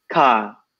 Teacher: So we say car. There's no r, it's just car. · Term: rhotic